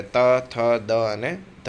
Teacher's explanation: દાંત સાથે જીભ અડે ત્યારે ત, થ, દ અને ધ આવશે.